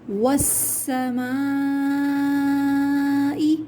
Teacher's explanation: سین پہ تشدید ہے، سختی کے ساتھ پڑھیں گے، میم پہ مد ہے، کھینچیں گے۔